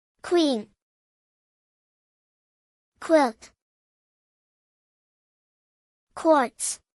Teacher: your vocal chords don't vibrate when you make the k sound but they start to vibrate when you move to the W sound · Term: KW sound